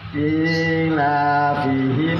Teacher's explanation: Namanya idhar syafawi, tidak dengung jelas.